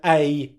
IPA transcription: eɪ